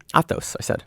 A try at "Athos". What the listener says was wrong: Not Thos. There's no T after it, or there's no H after it. The H is before. Athos.